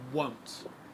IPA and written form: woʊnt (won’t)